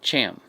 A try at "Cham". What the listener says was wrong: No, you said sham. You kept saying sham, but it's okay.